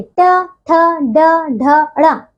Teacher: ये है ट वर्ग और इसका देखिए मूर्धा उच्चारण है।